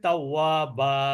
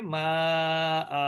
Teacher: শব্দের শেষে যদি দুই জবর থাকে তাহলে সেখানে থেমে গেলে কিন্তু এক আলিফ মাদ হবে, একটা জবর পড়তে হবে। এটাকে বলে মাদ্দে ইওয়াজ।